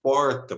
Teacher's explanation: esse R retroflexo que caracteriza tanto a linguajar do caipira